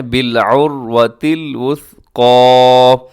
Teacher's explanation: آخر میں جو قاف ہے وہ موٹا پڑھا جائے گا